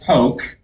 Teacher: a word like poke notice the O in here is elongated